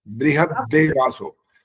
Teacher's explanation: बृहद में द हलंत है, फिर देवासो, और मिला देंगे तो डबल द जैसे होता है वो बन जाएगा